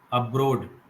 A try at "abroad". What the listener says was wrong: Again, putting too much pressure on O, a bra, a bigger O sound. You are making a very deep sound. We have to make a little more wider. Abroad. No, see, your mouth is like O, a bro, but my mouth is abroad.